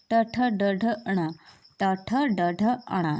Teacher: ट ठ ड ढ अण ये हमारे मुर्धन में आता है